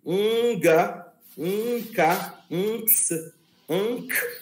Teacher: o primeiro gama vai ser nasalizado, vai ter o som parecido com G, com N, como NG